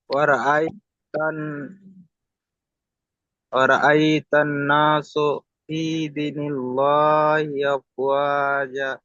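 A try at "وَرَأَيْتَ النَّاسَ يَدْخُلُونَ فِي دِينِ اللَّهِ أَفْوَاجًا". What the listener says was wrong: আপনি না সু পড়লেন, সিন যাবার সা, পড়েন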